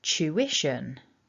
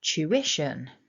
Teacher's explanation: So the first thing that you can see here is that we have 3 distinct syllables in this word, and that blue mark in the middle shows us that the strongest syllable is the second syllable, so we stress syllable 2